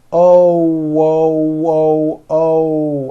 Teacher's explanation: my lips are all the way forward and the front of my lips are opening and closing like the front of a trumpet oh whoo whoo oh and you hear that little W sound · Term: o sound